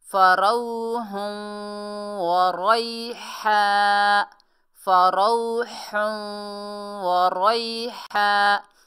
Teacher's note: हा को हलक के दरमियान से निकालिए।